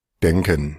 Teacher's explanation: hay una E abierta y se escucha claramente